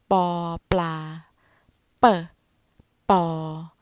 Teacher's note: The consonant we use here is pò, pla, p, pò, which is bilabial plosive